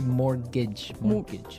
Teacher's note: it has a t in it, but you don't pronounce it. You say mortgage.